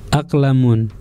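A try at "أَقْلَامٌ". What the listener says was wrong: Panjang lamnya.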